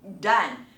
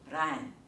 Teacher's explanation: 不要念成▁dan▁啊，你念成▁ran▁啊，就变成了一个闪音